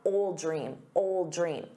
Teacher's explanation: You definitely don't want to say old. You want to say ol. So drop that D, ol, but then attach it to the noun, old dream, old dream.